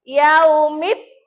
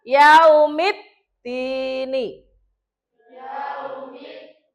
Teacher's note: Berarti cara membacanya ini alif lam itu lebur. Lebur itu dianggap tidak ada langsung masuk ke dal.